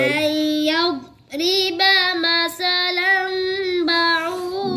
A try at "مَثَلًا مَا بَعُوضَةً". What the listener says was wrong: مثلا ما गुन्ने आपने छोड़ने शुरू कर जब मिलाते हो ना गुन्ना छोड़ते हो आप ताकि लफ्ज़ पूरा हो जाए ज़रूरी नहीं है पूरा करना आप रुक जाए वक़फ़ करें इससे मेरा सांस ख़त्म हो गया तो पीछे से पढ़ लेते हैं निशानी ना